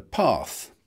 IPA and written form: pɑːθ (path)